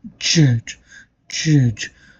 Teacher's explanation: the blade is getting contact with the alveolar ridge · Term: intermediate closure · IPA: /dʒ/